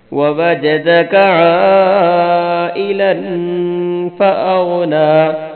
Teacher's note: عین پر مد کرنی ہے، لام پہ غنہ کرنا ہے اور غین کو موٹا پڑھنا ہے